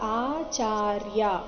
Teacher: ಆಚಾರ್ಯ ಮೂರು ಸಹ ದೀರ್ಘ ಇದೆ ಎರಡು ಕಾಲದ ಸಮಯ ಕೊಟ್ಟು ಹೇಳಬೇಕು